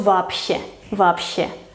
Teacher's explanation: Вообще. Pues la sh es sorda y entonces la B anterior se tiene que pronunciar sorda también y su pareja es la P